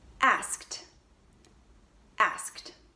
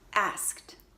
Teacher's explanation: you add Edie you're gonna get a T sound asked asked you won't hear the e at all and the D will sound like a T